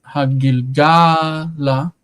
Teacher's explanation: The stress is on ga, and that is common with the directional hey, or the locative hey